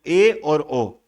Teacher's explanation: ए और ओ ये अर्ध संवृत है